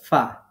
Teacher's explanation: নিচের ঠোঁটের পেট প্লাস উপরের দাঁতের আগা এখান থেকে উচ্চারিত হয় ফা